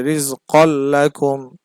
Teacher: কুম রিজ কল্লাকুম এখানে কফের উপরে তানভিন আছে দুই জবর আছে এই তানভিনের পরে লাম আসছে লাম হচ্ছে ইদগমে বেলা গুনার হরফ সুতরাং এখানে গুন্না ছাড়া পড়তে হবে রিজ কল্লাকুম গুন্নাহ করা যাবে না গুন্নাহ করলে কেমন হতো রিজ